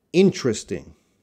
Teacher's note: so I'm cutting out the schwa sound in this word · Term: schwa deletion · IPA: /ˈɪnt(ə)rɪstɪŋ/